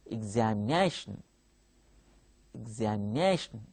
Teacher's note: you observe examination, the 4th syllable stands out.